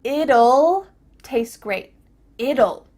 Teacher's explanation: when we say the contraction it will we kind of add a little you sound before the L